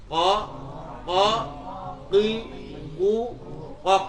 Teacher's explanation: qaf itu makhrajnya ada di belakang kaf.